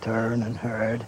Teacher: There's no R after the vowels as we have turn and heard.